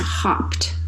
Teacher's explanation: Now notice in hopped, it sounds like a T at the end. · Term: ED ending